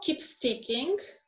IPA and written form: kiːps tɪkɪŋ (keeps ticking)